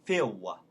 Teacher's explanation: on Phil, we have the L, so it becomes like a W